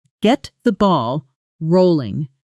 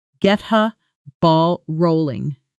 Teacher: Slowly, get the ball rolling. At speed, get the often becomes getha, almost dropping the hard T sound entirely. So it flows as getha ball rolling.